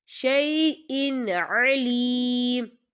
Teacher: عین جو ہے حروف ہلکی کا ورڈ ہے، تو یہاں پر اظہار ہوگا، تو ہم یہاں غنہ بالکل نہیں کریں گے، ہم اسے جلدی سے پڑھیں گے.